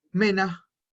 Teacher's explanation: cuando la R está al final de una palabra, como por ejemplo, mena, que significa hombres, esa R suena como una A, pero no siempre.